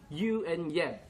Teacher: one other voiced palatal is Y sound used at the beginning of words like you and yet.